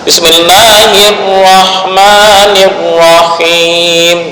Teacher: Menyembunyikan takrir bukanlah menghilangkan getaran ujung lidah. Tetap getaran itu ada walaupun hanya satu kali.